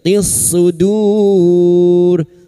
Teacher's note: Lam ta'rif yang bertemu sad idgham syamsiyah masuk pada huruf sad.